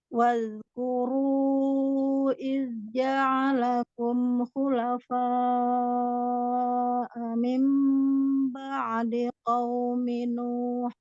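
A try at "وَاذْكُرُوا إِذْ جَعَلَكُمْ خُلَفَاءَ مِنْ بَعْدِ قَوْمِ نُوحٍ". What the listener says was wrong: Oke, Nuhnya hitungan 2 ya, harokatnya.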